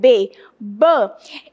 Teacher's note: eu mexo os dois lábios, é bilabial, eu mexo tal corda vocal com essa outra corda vocal.